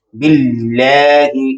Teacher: اللہ تعالیٰ کے نام سے پہلے حرف کے نیچے زیر ہے، اس کو باریک پڑھا